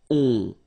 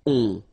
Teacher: so it's a nasal and it goes in your nose and it goes like on. All right, so you don't hear any N, so it's really on.